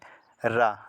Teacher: लुंठित जिन व्यंजन के उच्चारण में जीभ बेलन की भांति लपेट उठती है उसे लुंठित वर्ण कहते हैं।